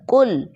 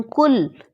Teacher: موٹے قاف سے ہے لفظ قل کہو کہہ دیجئے بتا دیں کہیں لیکن اسی کو اگر میں باریک کاف سے پڑھتی ہوں کل